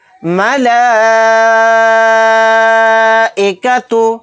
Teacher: حروف مدہ کے بعد حمزہ اسی کلیمے میں ہے تو یہاں پر بھی مد متصل کا قاعدہ ہوگا۔ لام کے ساتھ لام کھڑا زبر لگا کر لام کو کھینچنا ہے 4 الف کی مقدار